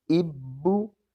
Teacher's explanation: شد کی وجہ سے پچھلے حرف کے ساتھ مل رہے ہیں، اور دوسری مرتبہ جو بھی ان پر حرکت ہے، چاہے وہ زبر ہے، زیر ہے یا پیش ہے، دوسری مرتبہ اس حرکت کو پڑھا جا رہا ہے